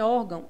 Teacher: é a penúltima em órgão a sílaba mais forte o ó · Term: paroxítona